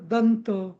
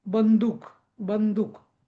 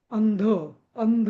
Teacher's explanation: अ वर जो अनुस्वार असतो त्याचा उच्चार नेहमी न होतो